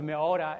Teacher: ora with the glottal stop becomes meora, and that's gone. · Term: lenition